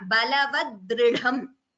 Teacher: Dha is Mahaprana. The first Dha is Alpaprana. Balavadridham.